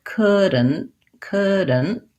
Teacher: and and stopped t so it sounds like could and couldn't that d n and t are all kind of one sound there together